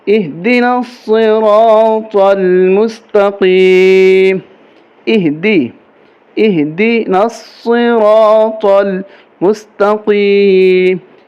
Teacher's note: اہدنا الصراط المستقیم، اہدنا الصراط المستقیم، یہ طا ہے، اس کو موٹا کر کے پڑھیں گے، صاد کو، را کو، یہ ہا ہے، یہ سینے سے نکالیں گے، حلق سے نہیں نکالیں گے۔